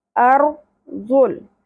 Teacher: رو تھرتھراہٹ کے ساتھ اور پر بھی ہوگا۔